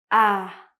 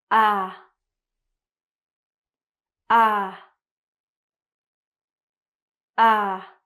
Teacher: my tongue is very low and my chin as well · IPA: /æ/